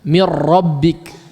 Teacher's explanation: langsung masuk kepada ra, tidak ada tersisa huruf nun di situ sehingga tidak ada gunnah sama sekali